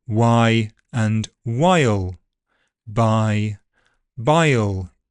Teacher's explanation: the tongue is making a central vowel on its way towards the velum for the velarized L sound. · You can hear the second word was significantly shorter than the first because of the voiceless consonant at the end of it. Also, these e diphthongs become kind of triphthongal before dark L